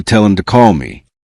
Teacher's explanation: The h in him becomes weak and the final consonant of tell connects to the vowel sound that remains. A learner may hear something like tell him and search for an unfamiliar word but a trained listener separates it into tell him.